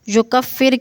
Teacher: جو کفر کی را باریک پڑھی جائے گی